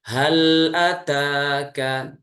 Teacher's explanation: huruf lam ini teman-teman perhatikan, kita tunaikan sifat tawasudnya ya, tengah-tengah antara syiddah dan rakhawah, yaitu kita alirkan suaranya sedikit. Hal ataka, jadi jangan terputus hal ataka ya, tapi dialirkan sedikit.